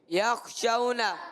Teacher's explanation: یخشون، شین کا مخرج ہے زبان کا درمیان، اوپر تالو کے درمیان سے شین ادا ہوتا ہے، اور اس میں ایک صفت تفشی بھی پائی جاتی ہے۔ اور واو ساکن سے پہلے زبر آئے، واو لین ہو گیا ہے، اور یہاں پر نرمی سے ادا کریں گے